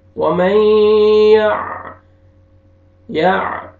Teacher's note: نون ساکن کے بعد حروف یرملون میں سے یا ہے، آپ نے ادغام کرنا ہے غنہ کے ساتھ